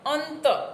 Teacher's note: દંત્ય અનુનાસિક ન, અંત